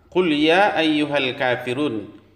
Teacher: mad arid lisukun dibaca panjang 6 harokat.